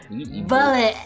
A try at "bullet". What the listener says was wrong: You fill your mouth up with unnecessary.